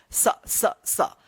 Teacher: दोनों दांत के बीच में जब जीभ आता है तब इसका उच्चारण होता है स। देखिए स दोनों दांत के बीच में है ना, मेरा जीभ आ रहा है स। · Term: दंत स